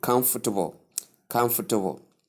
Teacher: the second syllable is not stressed and it's softened. It's suppressed a bit.